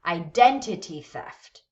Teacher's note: the first word is going to be stressed we don't stress every syllable of that first word we only stress the one syllable